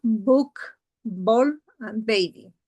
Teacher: complete lip closure and fully voiced